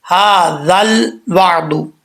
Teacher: واو کے بعد عین آ رہا ہے، عین میں کلکلا بھی نہیں کرنا اور عین کو حمزہ بھی نہیں پڑھنا، عین کو عین ہی پڑھنا ہے